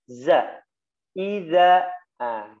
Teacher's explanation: Ya, desisnya dihilangkan, ya, jadi suaranya yang mengalir, ya, di situ ada desisnya. Desisnya itu bukan nafas, ya, desisnya itu suara, bukan desis nafas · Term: huruf zai